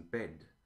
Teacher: in British it's more closed